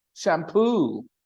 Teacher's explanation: the stress on the second syllable can be noticed